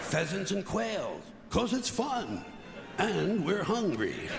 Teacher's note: he slightly underemphasizes fun